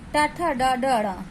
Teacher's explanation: ट ठ ड ढ ण, ये मूर्धास्य व्यंजन है। इन्हें दांतों और तलवे के बीच के हिस्से पर हमारी जीभ स्पर्श करती है, इसलिए ये मूर्धास्य व्यंजन है।